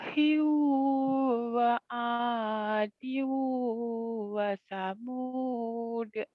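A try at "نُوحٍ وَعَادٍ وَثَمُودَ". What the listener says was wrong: Lagunya naik turun ya. Jangan naik turun lagunya. Nuhiu, nuhiu, nuhiu wa adiu wa samud. Nuhi wa 'ad wa thamud.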